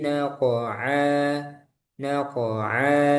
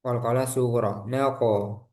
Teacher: Bihi naqa'a fa'atharuna bihi naqa'a naqa'a qaf sukun mantul qalqalah sugro naqo karena qaf dia tebal isti'la maka mantulnya juga tebal naqa'a eh, kemudian cara memantulkannya jangan ada hamzah naqa'a itu salah naqa'a tapi naqa'a naqa'a jadi sempurnakan dulu qalqalahnya baru ke ain.